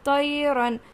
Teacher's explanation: تو یا زبر طی، یہاں پہ لین کا قاعدہ ہو رہا ہے، یا لین ہے، اس کو نرم آواز کے ساتھ جلدی ادا کریں گے۔